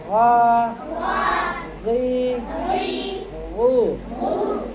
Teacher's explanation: ग और गैन हुरूफ मुस्तालिया में से है। इसको मोटा पढ़ना है।